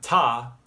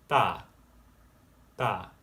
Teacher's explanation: This isn't ta, this is da, da. It's kind of halfway between a D and a T.